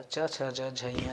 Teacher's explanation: च, छ, ज, झ, य जैसे ही हम करते हैं या उच्चारित करते हैं, बोलते हैं, तो च का उच्चारण करते समय, च, छ का उच्चारण करते समय आप देखेंगे कि जिह्वा तुरंत, जैसे ये जिह्वा है तो जिह्वा तुरंत दंत के ऊपर के स्थान को छूती है, अर्थात तालु को छूती है